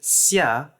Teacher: In Russian, it's pronounced as a voiceless palatalized fricative xia, which may be geminated. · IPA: /ɕː/